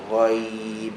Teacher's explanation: ada rakhawah, kita extendkan sikit bunyi dia